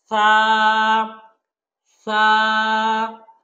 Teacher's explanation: জিহ্বার আগাটা ঠিক উপরের দাঁতের আগার সাথে লাগাবেন।